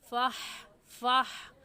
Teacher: हा हलक का आखिर जो सीने की तरफ है उससे निकलती है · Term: सीने वाली हा